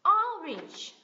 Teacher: âm lượng của nó mạnh hơn và cái volume của nó cao hơn một chút